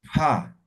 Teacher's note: Esto es simple, digo pa, igualito que el español, pa, ¿no ven? Esto es aspirada, entonces como soplando, pa, ¿no? Pa, ¿no?